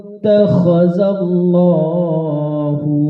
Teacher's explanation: Jadi bunyi huruf kha itu benar-benar berada pada posisi tenggorokan. Ya, seperti ada orang yang berdahak tapi dahaknya itu berada sakitnya di tenggorokan.